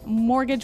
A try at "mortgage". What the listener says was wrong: Yeah, it has a T in it, but you don't pronounce it. You say mortgage. Mortgage. Not mortgage. Mortgage.